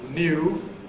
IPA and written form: njuː (new)